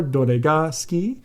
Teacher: You could just ask a question with rising intonation, same as in English.